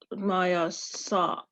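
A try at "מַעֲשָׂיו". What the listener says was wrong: So so the ayin has no sound. It doesn't have a Y sound. It's just no sound. So ma'asav.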